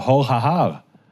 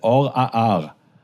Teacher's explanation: some modern Israelis do pronounce the Hey, and some pronounce it as an Alef